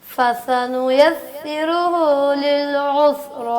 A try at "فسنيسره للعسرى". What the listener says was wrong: قاری صاحب سین کا نام نہیں لینا, سین کا نام نہیں لینا.